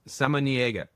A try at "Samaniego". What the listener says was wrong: And there's a go at the end.